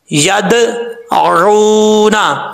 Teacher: यद आऊना, अब यहाँ पर अगर आप पढ़ेंगे यद आऊना तो ये गलत है, यद आऊना नहीं पढ़ना, यद कलकला करके फिर सही तरीके से पढ़ना है। यद आऊना, आइन को पढ़ते वक्त हमजा की आवाज़ नहीं आनी चाहिए, आइन के बाद वाव मद्दा है, एक अलिफ की मकदार इसको लंबा करके पढ़ेंगे।